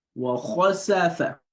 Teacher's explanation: the back of the tongue is raised up to the roof of the mouth. Wa khasafa, not wa khasafa.